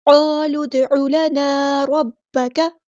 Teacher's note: کاف ہمارا light letter ہے، باریک پڑھیں گے اور زبر کو لمبا نہیں کریں گے